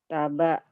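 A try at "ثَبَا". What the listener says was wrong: Salah. Titiknya di atas.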